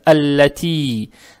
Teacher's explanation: С касрой. Касру тянем за счет буквы Я без огласовок. Тянем два раза. Это мад табиий.